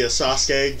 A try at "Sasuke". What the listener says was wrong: Sasuke, not Sasuke. There is literally another vowel in there.